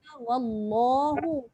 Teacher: Menebalkan huruf lam pada kalimah Allah. Itu maksud taghliz.